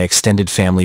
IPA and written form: ɪkˈsten.dɪd ˈfæm.əl.i (extended family)